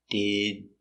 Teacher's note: you're going to make the sound d but you don't release so it's did and you stopped the air